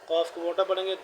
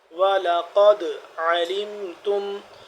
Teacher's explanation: خاسرین، وَلَقَدْ قاف دال زبر قد، قاف کو موٹا پڑھیں گے، دال جب آ گیا، دال ساکن آ گیا تو اس کو ہم قلقلہ کریں گے